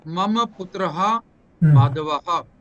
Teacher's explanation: this Visarga has to be spoken like Ha